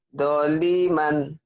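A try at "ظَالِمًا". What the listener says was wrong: Ini kan zoanya ada alifnya, Bu. Zaliman.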